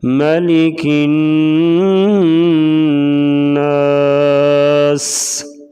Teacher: ادھر بھی نون ہے، نون کے اوپر شد آ گیا ہے. نون اور میم کے اوپر شد ہوگی تو ہمیشہ غنہ کر کے پڑھیں گے